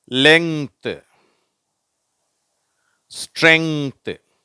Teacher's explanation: இந்த எண்ணும் ஜியும் சேர்ந்து இங்கா மாறிடுச்சு. டிஹெச் வந்து இத்தா மாறிடுச்சு.